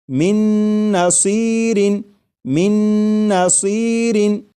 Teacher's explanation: میم کے بعد نون مشدد جو ہے اس کی آواز آئے گی اور غنہ کے ساتھ پڑھیں گے